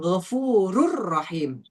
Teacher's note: nun mati atau tanwin ketemu dengan ro misalkan gfurur rahim melebur ke ro nunnya melebur ke ro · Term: idgham